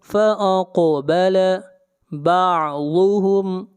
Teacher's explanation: ضاد کو موٹا پڑھیں گے، ضاد حروف مستعلیہ میں سے ہے